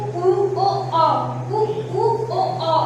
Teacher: ऐसे स्वर जिनका उच्चारण करते समय हमारे ओठ गोल आकार के बनेंगे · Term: आवृत्तिमुखी